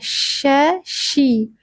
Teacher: Tengah lidah menyentuh langit-langit disertai angin yang menyebar dari rongga mulut. Shi. Jadi bukan si ya teman-teman, bukan siqo tapi syiqo.